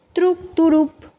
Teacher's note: যুক্ত বর্ণকে কিন্তু এখানে আমরা ভেঙে ভিতরে স্বরধ্বনি আনলাম, এটাই কিন্তু স্বরভক্তি।